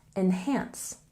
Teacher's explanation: And a stress on the second syllable, enhance